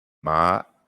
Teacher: Ma with the glottal stop at the end